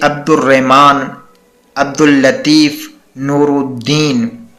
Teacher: ہم نے الف کو بھی نہیں اس میں پڑھا اور لام کو بھی نہیں پڑھا، بلکہ ہم نے پچھلے الفاظ سے ملایا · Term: حروف شمسی